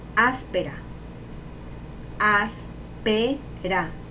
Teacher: ¿Y cuál es la sílaba tónica? As. Y sería esdrújula.